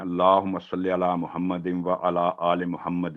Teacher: واو پر تشدید ہے, تو واو کے ساتھ ادغام بالغنہ, غنہ کے ساتھ ادغام ہوگا